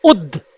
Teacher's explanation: उच्चारण कीजिए उद्द, तो आधे दा की ध्वनि निकल रही है